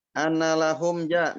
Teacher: mim sukun bertemu jem ini dibaca jelas izhar syafawi.